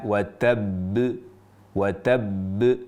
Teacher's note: "Watabb", nah ada jeda seperti jeda ini tapi tidak boleh terlalu lama. Jadi suara seperti jeda itu menunjukkan bahwa huruf qalqalah itu bertasjid.